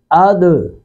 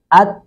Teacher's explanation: اوپر والے دونوں سامنے والے 2 دانتوں کی جڑ، اس کے ساتھ زبان کا کنارہ لگتا ہے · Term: مخرج